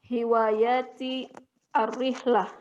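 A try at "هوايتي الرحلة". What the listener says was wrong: Hiwayati, wanya yang panjang Ibu. Hiwayati,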